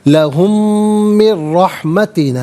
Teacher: रा पर ज़बर है, रा को पुर करके पढ़ेंगे। · यहाँ पर यरमलून का कायदा अप्लाई होगा और बल्कि यहाँ पर मीम साकिन को मीम के साथ मिलाकर मीम की आवाज़ को गुन्ने के साथ अदा करेंगे। और यहाँ नून साकिन के बाद रा है तो नून साकिन को रा के साथ मिलाकर रा की आवाज़ को अदा किया जाएगा।